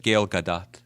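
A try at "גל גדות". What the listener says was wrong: Gal Gadot? Do you mean Gal Gadot? Because you said Gail Gadot. You said Gail Gadot. It's Gal Gadot.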